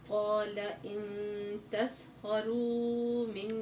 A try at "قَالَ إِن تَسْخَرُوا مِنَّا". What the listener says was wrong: لا تمد زيادة، مد طبيعي.